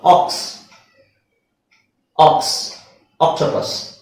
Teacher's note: ಆಕ್ಸ್ ಅಂತ ಹೇಳ್ತಿವಿ ಆ ಓ ಅಂತ ಹೇಳಲ್ಲ ಓಕ್ಸ್ ಅಂತ ಹೇಳಲ್ಲ